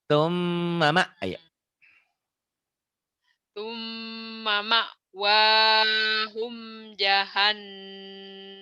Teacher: Mimnya ditahan karena gunnah.